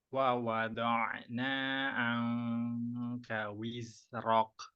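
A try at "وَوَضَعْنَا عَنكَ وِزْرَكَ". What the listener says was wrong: Nah, itu kafnya masih tebal. Rok, rok. Tapi rok, rok.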